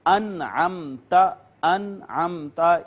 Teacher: تو آپ دیکھیے یہ نون ساکن آیا ہے اور نون ساکن پہ اخفا ہوتا ہے، آواز چھپائی جاتی ہے، لیکن یہ چونکہ آگے حرف اظہار عین آ گیا ہے، یہ والا اس وجہ سے نون ساکن پہ آواز نہیں چھپائیں گے، اخفا نہیں کریں گے، بلکہ یہاں پر بھی اظہار ہوگا